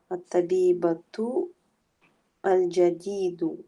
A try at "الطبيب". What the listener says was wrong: There's no tu on the end. There's no ta marbuta.